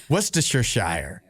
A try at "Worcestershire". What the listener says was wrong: You're adding shire, and I guess But you're putting such a big emphasis on it. I always thought Worcestershire. Sheer. Like Shire, but sheer.